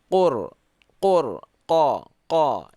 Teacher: Ini qaf. Keluarnya di pangkal lidah paling bawah.